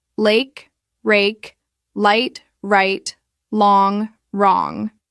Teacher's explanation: For the R sound, like in rake, the tongue pulls back and tenses, but it doesn't touch anything.